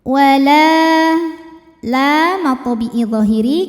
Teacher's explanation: jadi yang lebih utama diteruskan atau disambung ya wala la thiiiri karena ada Alif didahului baris fathah maka huruf lam panjang dua harakat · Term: Mad thobii